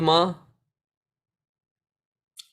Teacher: When do you make that sound ma? When the mouth is shut, when the lips are closed.